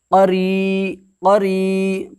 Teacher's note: 1 अलिफ के बराबर खींच करके अदा करेंगे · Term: या मद्दा